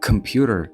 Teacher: К кк має бути з придахом к computer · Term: аспірація